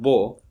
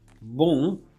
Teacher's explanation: if it's pronounced with the velum raised, which means the nasal cavity is closed, then you have beau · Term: the regular O